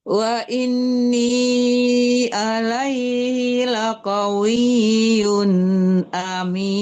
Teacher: Harus jelas tanwinnya. Jangan enggak ada samaran, tidak dengung di situ ya.